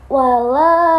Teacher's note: Dia hukum bacaannya di bagian lam. Wala itu ada mat tobi'i, alif dibaca 2 harokat atau dipanjangkan.